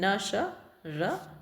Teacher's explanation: दंत मूल से न स र ल आएगा आपका